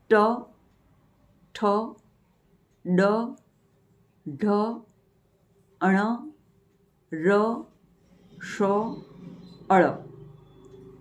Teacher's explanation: દાંતનું જે મૂળ છે એની ઉપરનો જે પેઢાનો ભાગ છે એને મૂર્ધા કહેવાય છે. તો જીભ જે મૂળાક્ષરોના જે વ્યંજનોના ઉચ્ચારણ વેળા મૂર્ધાને અડે છે તો એને કહેવાશે મૂર્ધન્ય વ્યંજનો